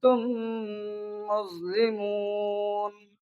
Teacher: मीम की जो अदायगी की ताल्लुक है वो होंठ से है, इस वजह से इसे शफवी कहा जाता है। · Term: इदगाम शफवी